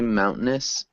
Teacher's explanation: Be aware that we swallow this T sound. It's almost a silent T sound.